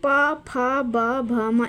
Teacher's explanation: प वर्ग में प फ ब भ म इसमें होठों का स्पर्श आता है।